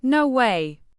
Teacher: If they're surprised, it's a big, no way, with rising pitch.